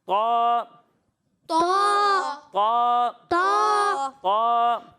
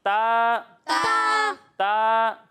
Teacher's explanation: اور جب ہم تا کی ادائیگی کریں گے تو اسے باریک پڑھیں گے، طا کو موٹا پڑھیں گے اور تا کو باریک پڑھیں گے